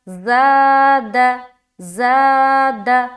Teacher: تو ہم اسے کھینچ رہے ہیں، زا کو کھینچ رہے ہیں نا ایک الف کی مقدار کے بقدر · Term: الف مدہ